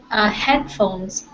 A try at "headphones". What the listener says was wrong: Absolutely.